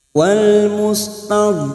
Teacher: tepi pinggir lidah bagian pangkal sampai ujungnya ditempelkan pada gigi geraham bagian atas baik yang kiri atau yang kanan